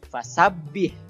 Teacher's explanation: Kemudian ha sukun, ha-nya ha kecil, ya, bukan ha besar. Jadi ha-nya seperti nafas saja biasa.